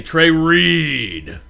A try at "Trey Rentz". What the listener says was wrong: That's not my last name.